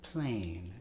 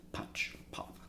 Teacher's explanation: when the L comes in, it softens the punching plosive quality of the P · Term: liquid consonant